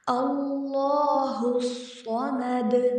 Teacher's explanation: قل هو اللہ احد، اللہ الصمد، لفظ اللہ کو ہم نے موٹا پڑھنا ہے، اللہ الصمد، صوت کو موٹا پڑھیں گے زبان کی جڑ کو اٹھا کر، اور سیٹی کے ساتھ بھی پڑھیں گے